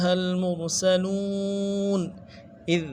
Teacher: اذ دال کو باریک کرنا ہے، نرم سے ادا کرنا ہے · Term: دال باریک